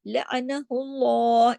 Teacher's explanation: اللہ کے نام سے پہلے پیش ہے لعنہ اللہ، اس میں لام جلالہ کرنا ہے، موٹا کر کے پڑھنا ہے